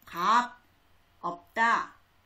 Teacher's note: 비읍과 시옷 중에는 비읍이 소리가 납니다.